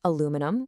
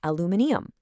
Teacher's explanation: While North Americans say aluminum with four syllables, the British say aluminium with five.